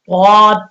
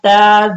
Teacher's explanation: ثقولت ہا پیش حو شین زیر شی حوشی را تا زبر رت حوشیرت سین پیش سو طا زیر طی صوتی حا تا زبر حت صوتیحت کاف پیش کو شین زیر شی کوشی طا تا زبر طت. اب دیکھیں دونوں کا مخرج ایک ہے لیکن طا کو آپ نے موٹا پڑھنا ہے اور تا کو باریک پڑھنا ہے